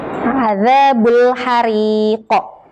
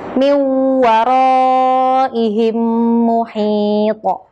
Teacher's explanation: Disebut bacaan qalqalah kubro apabila salah satu huruf qalqalah berharokat fathah, dhammah atau kasrah yang dibaca sukun karena diwakafkan atau dihentikan di akhir kalimat atau lafal. Cara membacanya sangat jelas dengan pantulan lebih kuat atau tebal atau berat hingga seperti membalik.